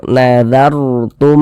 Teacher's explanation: Ada huruf ra sukun sebelumnya harokat fathah, maka huruf ra sukunnya dibaca tabkhim. Dibaca tebal sehingga pangkalisan kita naik terangkat ke atas ketika kita mengucapkannya.